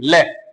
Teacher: ल एक बार जाके टच हुई वापस आ गई